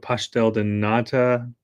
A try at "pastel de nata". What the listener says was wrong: We say de nata. And they were like, it's not a D, it's a T.